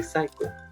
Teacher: ps beginning you don't say the letter you don't pronounce the letter p you just say psycho